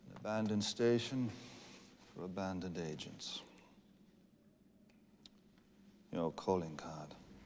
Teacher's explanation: And just like Sean Connery, he has this kind of like the deep baritone, neutral, received pronunciation accent with just a wee twist of Irish in it